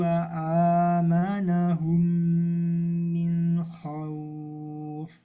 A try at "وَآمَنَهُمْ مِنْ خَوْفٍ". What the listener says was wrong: Nah, kurang jelas nunnya. Min khauf min khauf.